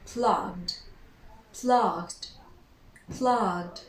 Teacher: So in order to say that verb in simple past, we need to add the ed. So with the voiced sound, with this sound, we never pronounce the e, never ever. We simply produce the d.